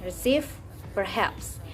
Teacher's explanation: the final syllable is stressed in receive perhaps